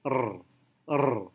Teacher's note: saat kita mengucapkan huruf r dalam bahasa Indonesia kecenderungannya adalah kita menggetarkan lidah r r tapi dalam bahasa Inggris tidak bergetar sekuat dalam bahasa